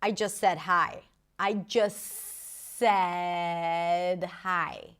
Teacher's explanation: Again, another example of just that is reduced. The t is dropped and it's connected to the next word.